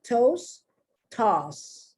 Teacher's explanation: You barely pronounce the T if you pronounce it at all.